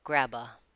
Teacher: grab is linked it sounds more like one word grabba